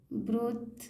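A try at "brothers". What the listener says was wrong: था नहीं, द। ब्रदर्स।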